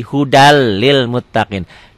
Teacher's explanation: Hudan Lil Muttaqin dibacanya jadi hudalil Muttaqin n-nya jadi hilang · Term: idgham bilagunnah